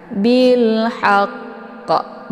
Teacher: Jadi harus sempurnakan tasydid dulu baru dipantulkan. Jadi ini agak sedikit tertahan dulu ya. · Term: qalqalaf akbar